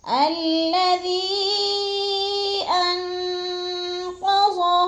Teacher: الذی کو ہم نے کھینچنا ہے کیونکہ ادھر مد منفصل ہے، حروف مدہ کے بعد حمزہ دوسرے کلمے میں آ گیا ہے، مد منفصل ہے، 4 الفی مد ہے، 4 الف کے برابر ہم نے اس کو لمبا کر کے پڑھنا ہے